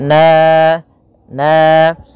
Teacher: panjangnya fathah bertemu Alif sepanjang dua harakat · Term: Mad thii